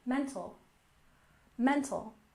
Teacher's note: we stress the first syllable mental